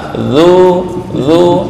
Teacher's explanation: ujung lidah dengan ujung gigi atas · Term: Dal